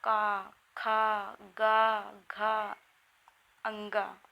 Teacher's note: इन व्यंजन वर्णों के उच्चारण में जिह्वा किसी न किसी भाग को स्पर्श करती है, इसलिए इन्हें हम स्पर्श व्यंजन कहते हैं। जैसे कंठ, तालु, दंत, होंठ आदि को स्पर्श करती है, इसीलिए इन्हें हम स्पर्श व्यंजन कहते हैं।